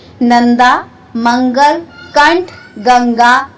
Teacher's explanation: अनुस्वर का उच्चारण स्वर के उपरांत किया जाता है तथा इसका उच्चारण करते समय नाक से ध्वनि का संचार होता है।